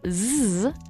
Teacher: One really fun way to demonstrate this is if you take your hand and place it on your throat and alternate between saying s and z. You'll feel with zzz that your throat is vibrating. That means that sound is voiced. With the s sound, you probably won't feel nearly as much, if any, vibration in your neck, and that means it's voiceless.